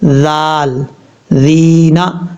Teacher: ذال اس کا مخرج ہے زبان کا سرا اوپر والے دانتوں کے اندرونی کنارے سے لگے تو ذال پڑھا جاتا ہے، اور یہ بریک پڑھا جاتا ہے، اس کو پر نہیں پڑھنا، موٹا نہیں پڑھنا۔